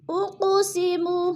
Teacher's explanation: اقو پہ قلقلہ ہو رہا ہے کیونکہ قاف حروف قلقلہ میں سے ہے اور ساکن ہے تو اس کو ہلا کر پڑھنا ہے۔